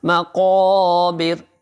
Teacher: یعنی کہ آپ منہ پورا تھوڑا سا زیادہ کھولیں گے، تھوڑا سا آواز کو اوپر کی طرف اٹھائیں گے۔ مقابر، رکنے کی وجہ سے را ساکن ہو گیا، اب را ساکن سے پہلے چونکہ زیر ہے اس لیے را باریک پڑھا جائے گا